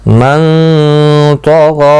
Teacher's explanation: دیکھو غائن اور طا دونوں مستعلیہ ہیں, پر پڑے جائیں گے. غائن کو کھینچنا بھی ہے ایک الف کی مقدار کے برابر.